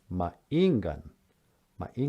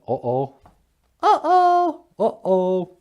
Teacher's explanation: that little glottal stop there, that means it's kind of like the dash in uh-oh